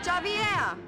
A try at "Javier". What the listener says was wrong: It's Javier. It's pronounced like an H. Javier.